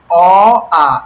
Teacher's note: অ আ এটা বলবার সময় কিন্তু আমাদের মুখের সামনের অংশ থেকে উচ্চারিত হয়নি বরং গলা থেকে এসেছে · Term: কন্ঠ বর্ণ, কণ্ঠবর্ণ